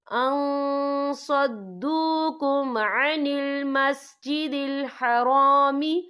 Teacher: یا دیکھیں ان، یہاں نون ساکن ہے، نون ساکن کے بعد جو ہے صاد آ رہا ہے، اور صاد جو ہے افا کا ورڈ ہے، تو ہم یہ افا کریں گے، نون ساکن کی آواز کو ناک میں چھپائیں گے